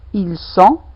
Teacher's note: Remarquez, il y a toujours pas de prononciation de T.